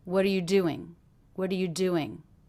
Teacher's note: do you hear how the syllable do sticks out of that phrase more than anything else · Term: stressed word